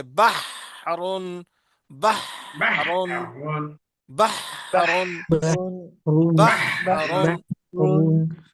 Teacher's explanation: ہا کی آواز درمیان حلق سے رگڑ کھا کر نکلتی ہے